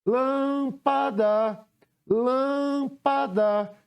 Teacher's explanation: o lan é a antepenúltima sílaba que eu pronunciei com mais intensidade · A penúltima foi o pá, mas a antepenúltima sílaba é a que eu pronunciei com mais intensidade. Então, o lã é a antepenúltima sílaba que eu pronunciei com mais intensidade. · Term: sílaba tônica